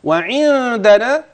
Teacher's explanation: هتخفي النون عند الدال